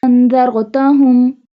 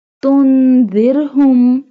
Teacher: Did you notice that in انذرتہم ra will be bold but in تنذرہم ra will not be bold because انذرتہم in انذرتہم ra before ra has zal and zal has fatha and تنذرہم ra has nothing and before ra has zal and zal has قصرہ.